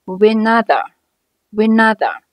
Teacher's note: 个词连在一起，前一个词▁but▁尾音的▁t▁是一个爆破音，失去爆破不发声。But▁when,▁but▁when，▁我们听起来中间是一个小小的停顿。 When▁和▁other▁两个词可以辅元连读